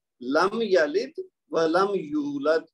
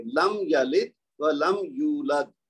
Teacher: یعنی لم کے اوپر یہ جو میم ساکن ہے اور آگے پھر لم کا میم ساکن ہے، چونکہ ان کے پاس اس کے بعد یا ہے، یہاں بھی یا ہے، یہاں یا زبر ہے اور یہاں یا پہ پیش ہے، تو دونوں صورتوں میں میم کو ظاہر کریں گے. لم یلد ولم یولد، اس کو لمبا نہیں کرنا.